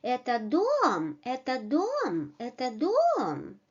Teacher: we change the intonation to the rising one